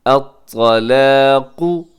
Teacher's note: लेकिन आखिर में जो क़ाफ आता है उसे आपने मोटा रखना है · अत्तलाक़ु इसमें हरफ़े तौ मोटा पढ़ा जाएगा, इसे बारीक ना कीजिएगा।